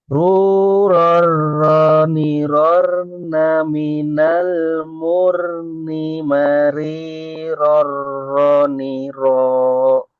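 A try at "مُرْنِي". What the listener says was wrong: Nah, mur. Tadi kurang tebal. Murni.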